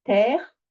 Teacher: Donc terre, ma syllabe, j'ouvre parce que j'ai le R.